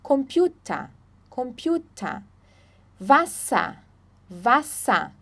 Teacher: como se não tivesse o r ali como se fosse um a